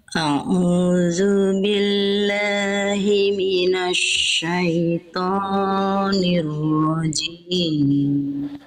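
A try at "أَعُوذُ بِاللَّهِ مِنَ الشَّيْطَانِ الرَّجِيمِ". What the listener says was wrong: Oke, shin jangan minasya, enggak minasya. Dia nggak pakai monyong-monyong bibir, huruf shin. Minasya jadi bukan minasya. Lalu huruf to jangan kepanjangan. Jim jangan keluar bisikan nafas, percikan nafas.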